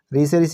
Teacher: ऋ से ऋषि हमारा कैसा स्वर है, तो मूर्धन्य स्वर है